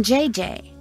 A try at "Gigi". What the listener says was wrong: Gigi. En français, you pronounce G like J and J like G. She may very well be JJ in America, but in France, she is Gigi.